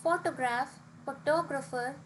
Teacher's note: the photograph has the stress on the first syllable whereas photographer has stress on the second whereas photographic has press on the second last syllable so this